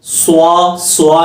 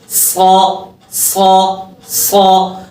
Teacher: जब सौद की आवाज को पढ़ेंगे तो मोटा तो करेंगे लेकिन होठ गोल ना करें